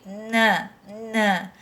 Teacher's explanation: Você vai sentir que o som do tio vai sair pelo teu nariz, tá? Então, por isso que indica o som nasal, por isso que fala que é nasal.